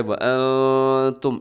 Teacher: व अंतुम ऐसे इख्फ़ा होता है, आवाज़ को नाक में छुपाते हैं